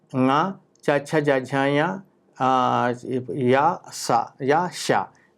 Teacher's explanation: These are born in talu or palate.